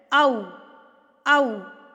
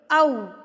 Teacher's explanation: پہلے آپ کا منہ کھلے گا، واو پھر آپ کا منہ ہونٹ گول ہو جائیں گے